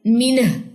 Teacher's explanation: ہاں کی پیش کو گرائیں، جزم آ جائے گی